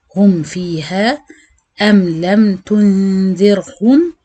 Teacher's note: بالنسبة لباقي الحروف، ميم ساكنة بعدها باقي الحروف، بنعمل إظهار شفوي، يعني هننطق الميم عادية بدون أي غنة